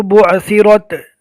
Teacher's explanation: عین کو اچھی طرح حلق سے نکالنا ہے